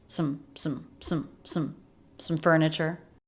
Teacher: The word some said very quickly. I would maybe even write that with a schwah phonetically just to show that it was said so quickly that it was an unstressed word.